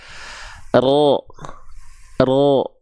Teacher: ketika kita lafalkan huruf ro itu lagi-lagi dia bukan ujungnya yang nempel tapi punggung lidahnya